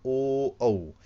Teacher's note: ओ और औ को कंठ और ओष्ठ के माध्यम से बोला जाता है, यानी कंठ की सहायता से भी और ओष्ठ की सहायता से भी, क्योंकि ओष्ठ की यदि आकृति नहीं बनेगी तो ओ और औ के उच्चारण नहीं हो पाएगा। · जब हम ओ बोलते हैं तो हमारे हमारे जो होठ हैं वो इस प्रकार से थोड़े से ज़्यादा खुलेंगे, और इन्हीं से ही ओ औ बोला जाएगा, ओ औ, ठीक है। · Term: कंठोष्ठ